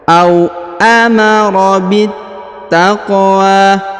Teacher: Huruf qaf berharokat sukun, maka kita pantulkan atau kita qalqalahkan.